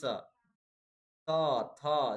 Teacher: अब बोल के चाहिए ना दंत स, त, थ, देखिए आपका जीभ जाकर दांत में सट रहा है, ठीक है, तो दंत हो जाएगा।